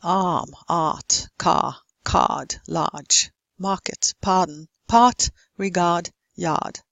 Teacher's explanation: Now, when there's the sound and an R in the spelling, the R would be pronounced in American English and many Irish and Scottish varieties as well. But the R would be silent in British English accent.